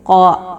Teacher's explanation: الف مدہ 2 حرکت کے برابر اس کو لمبا کریں گے